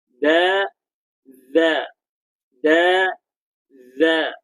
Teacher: hujung lidah bertemu dengan hujung gigi kacip atas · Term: huruf zal